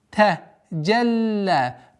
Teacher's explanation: При остановке аннулируется удлинительный алиф. Остается удлинение в размере двух огласовок.